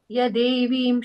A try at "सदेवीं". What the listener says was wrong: the first line, first letter is sir. It's a sir. I heard a ya, so.